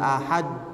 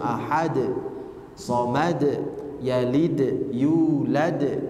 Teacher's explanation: ujung-ujungnya tidak ditahan tidak Ahad tapi langsung Ahad Somad yalid yulad langsung memantul